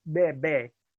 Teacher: You voice it, but if you put your hand in front of your mouth and say bebe, you should essentially get no air